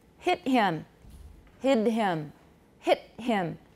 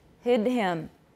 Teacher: hear the difference in length between a final voiceless stop and a final voice stop